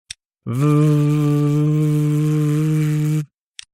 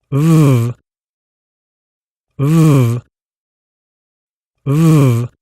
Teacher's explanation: Remember, the /v/ is a continuous sound, so you should be able to stretch it out